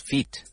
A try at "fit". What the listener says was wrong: Yes, because if you say feet it's my feet that you use to walk with, yes. So, it's like fit.